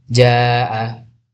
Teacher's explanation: mad wajib muttasil panjang empat atau lima harakat. Madtemu hamzah dalam satu kata.